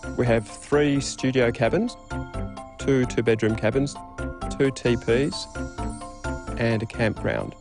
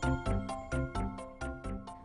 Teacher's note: A level tone or a low rising tone can also be used for listing.